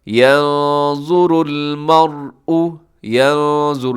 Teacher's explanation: آگے يَنظُرُ الْمَرْءُ، يَنظُرُ، یہاں نون ساکن ہے، نون ساکن کے بعد حرف ظا موٹا بھی پڑھا جائے گا، اور یہاں اخفا بھی ہوگا، نون کی آواز آپ چھپائیں گے ناک میں۔